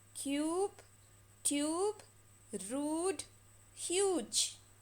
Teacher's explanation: now this is the long u sound cube tube rude huge you can see that we are stretching the u so it's the long u sound